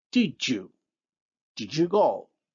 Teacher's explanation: the voiced alveolar stop d becomes the voiced palatal-alveolar affricate j in the example, did you go?